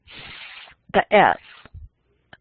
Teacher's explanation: A fricative, we're causing friction as air blows through our teeth. Like s the s that's aperiodic noise.